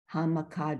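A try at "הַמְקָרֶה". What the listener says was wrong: Hamkare. Yeah, there's no D, yeah, Hamkare.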